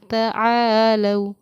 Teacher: تو اس کو جہاں کھینچ کر 1 الف کے برابر کھینچ کر پڑھیں گے، وہیں اس کو پڑھنے کا طریقہ یہ ہے کہ نرم آواز کے ساتھ لو کو ہم نرم آواز کے ساتھ جلدی ادا کریں گے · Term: حروف لین